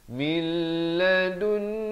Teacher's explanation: Idgham bila gunnah. Nun mati bertemu lam. Masuk tanpa dengung. Daripada min jadi mil.